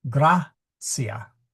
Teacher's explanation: That is a short I. So we have to go to the to the syllable in front in order to accent it.